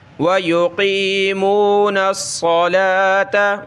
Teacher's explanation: صاد پہ سیٹی کی آواز نکالیں اور موٹا کرنا ہے.